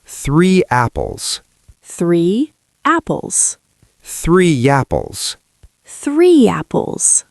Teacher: The Y appears when your mouth is wide, like a smile. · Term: the Y sound